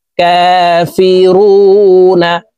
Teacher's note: রু 3 আলিফ টেনে নুনকে সাকিন করতে হবে, কারণ মদের হরফের বামের হরফে ওয়াকফ হইলে মধ্যে আরজি 3 আলিফ টানিয়া পড়িতে হয়।